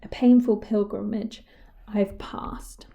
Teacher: we have the repetition, the alliteration of the plosive P there